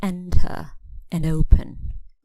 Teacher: we stress the first syllable